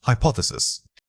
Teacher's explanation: When you say hypothesis, the focus must be up front.